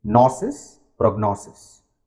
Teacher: We are basically stressing the syllable before sis.